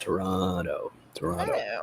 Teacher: the T in the middle turns into a D sound